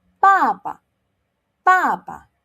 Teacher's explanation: it's a fourth tone and it's starting with a B, so we do not blow.